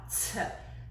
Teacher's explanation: So if you place your hand in front of your mouth, t, you should feel a puff of air coming out. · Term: aspirated